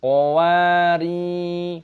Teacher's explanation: Qowa, wawu-nya panjang, ada tanda alif, mad thabi'i, panjangkan dua ketukan. Ri, ada sukun ya jadi r dipanjangkan dua ketukan, qowari, semuanya mad thabi'i, qawarir.